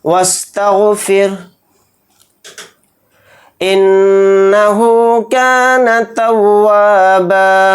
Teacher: نون کے اوپر تشدید ہے تو نون میں غنہ کریں گے. ہا کے اوپر الٹا پیش ہے ہا کو تھوڑا کھینچ کر پڑھیں گے.